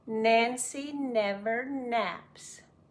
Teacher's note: front of the tongue up against the top of the mouth close to the front no air gets out it comes out through the nose rumbles in the head